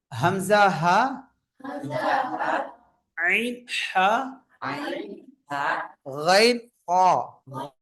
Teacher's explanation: தொண்டை எழுத்துக்கள் ஏன்னா இங்க கவனிங்க இந்த ஆறு எழுத்துக்களும் தொண்டையிலிருந்து வெளிப்படுது